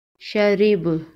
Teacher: شین زبر شا، را زیر ری، شری، با زبر با، شریبا وقف، شرب۔ وقف کی صورت میں با پر قلقلہ ہوگا